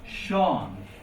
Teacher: An S is like a normal S sound. But an S before slender is a sh sound. That's why you see famous name Sean.